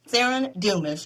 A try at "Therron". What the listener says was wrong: Yeah, you're close. It's Therron. You just say it faster. Therron.